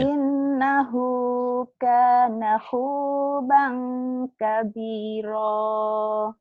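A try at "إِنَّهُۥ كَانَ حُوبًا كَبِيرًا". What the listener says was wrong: Jangan kabiroh ya. Innahu kana huban kabiro. Kayak ada ka ujungnya. Jangan kabiroh, jangan kabiro.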